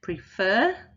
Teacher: in prefer prefer the second syllable is stressed